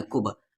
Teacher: اب با ساکن ہے تو قلقلہ ہوگا یہاں پر